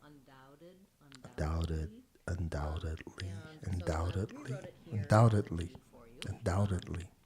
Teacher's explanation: letter T sounds a little bit more like a D in this called a flap.